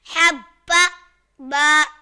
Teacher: یہاں با مشدد ہے تو با کو جماؤ کے ساتھ پڑھیں گے